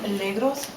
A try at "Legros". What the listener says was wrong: The S is silent.